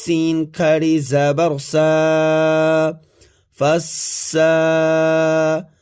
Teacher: کھڑی زبر کی وجہ سے ایک الف کی مقدار کھینچ کر کے پڑھا جائے گا سین کو، اور کھڑی زبر کے ساتھ ساتھ سین پر شد بھی ہے، تو سین مشدد ہوا جس کی وجہ سے سین کو سختی کے ساتھ زور دے کر کے پڑھا جائے گا۔